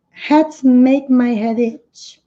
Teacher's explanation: E aqui vai ter um linking sound, o som se liga, porque termina com o som de consoante, som do D, e vai emendar com itch.